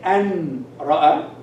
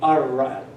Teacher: So these two letters, lam and ra, when they appear after the noon, sakin, or the tanween, they are joined with the noon, and the noon disappears, the sound of the noon disappears in the letter that comes after, in the lam or the ra.